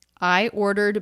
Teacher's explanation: i ordered both a little flatter lower in pitch